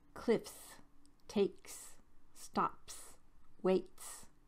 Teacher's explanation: s makes the s sound after unvoiced consonants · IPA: /s/